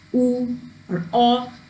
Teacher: when we pronounce the vowels like ooh or or the lips are rounded